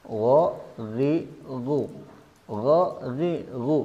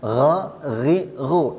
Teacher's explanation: huruf ghain ini bersifat jahr bersifat jahr artinya tidak ada nafas yang keluar makanya mengucapkan huruf ghain ini jangan dicampur dengan huruf k